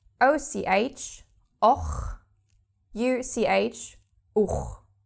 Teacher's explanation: Now we have O and U. After those two, the H again is hard guttural. So OCH, och, UCH, uch.